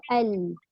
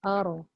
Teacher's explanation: Lam itu dia punya lidah lencong sedikit ke kiri atau kanan. Ra pun melencong kiri atau kanan, tetapi ra itu ada getaran kan. Tapi lam tak ada alalala.